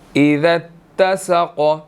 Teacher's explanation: ذال تا کے ساتھ مل رہی ہے. ٹھیک ہے, اور اسی طرح جو ہے قاف یہاں پر سائلنٹ ہوگا تو یہاں پر ہم نے قلقلہ کرنا ہے.